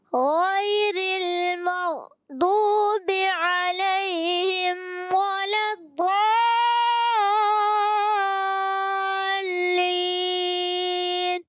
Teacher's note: غیر را کو باریک رکھیں گے